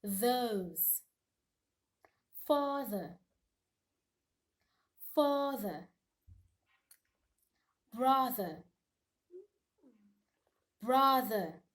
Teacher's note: the voice th sound has to do with the production of a vibration there has to be a vibration from your voice so you place your tongue in between your teeth as usual